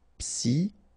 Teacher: Okay, remember it's an exception here because you've got this C-H-O. Normally we should pronounce it CHO, okay, but in that case we pronounce it CO.